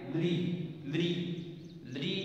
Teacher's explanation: जब अपन उच्चारण करते हैं तो जीभ, जीभ स्पर्श करती है दांतों को